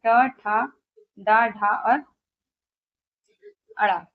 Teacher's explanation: मूर्धन यानी मूर्धन से उच्चारण होने वाले अक्षर है ट वर्ग